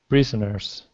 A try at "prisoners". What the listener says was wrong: That was much better. It's just a matter of that short I.